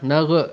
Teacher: jangan qalqalah kerana ghain bukan huruf syiddah, jadi dia tidak akan menghasilkan sifat qalqalah.